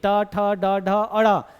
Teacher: जीभ मूर्धा को टच करेगी ही करेगी।